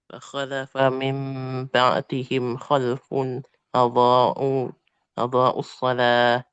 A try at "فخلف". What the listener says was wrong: Fakhalafa. Fakhalafa. Nah, ditebalkan lagi. Ya, fakho.